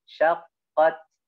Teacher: Jadi ditekan dulu sedikit, ya. Karena dia memiliki sifat syiddah.